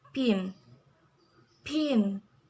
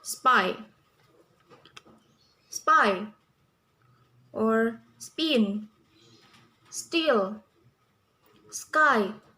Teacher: key now let's move into an aspirated sounds it means that it is not pronounced with the sound of a breath or letter h